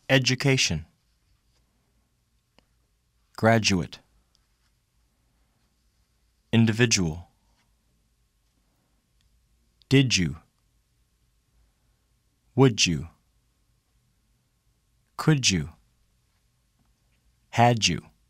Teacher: The sound D followed by U is pronounced J.